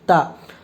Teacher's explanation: زبر کی آواز اوپر کو اٹھتی ہے، آواز اور منہ کھلے ہوتے ہیں